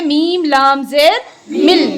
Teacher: बीच में जो नून है उसकी आवाज़ नहीं आएगी। इसी को कहते हैं इदगामे बिला गुन्ना।